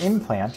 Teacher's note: around them for example the word implant used to be implant the n changed to an m to be more like the p sound that followed it